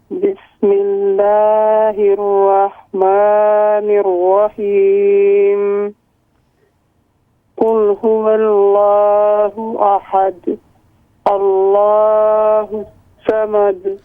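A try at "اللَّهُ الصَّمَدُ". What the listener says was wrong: صاد حروف مستعلیہ میں سے اس کو موٹا کریں. اللہ الصمد.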